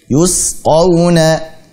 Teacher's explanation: Yusqawna, tipiskan sin. Yus dan tajam. Yusqawna. Jangan sampai yuskawna.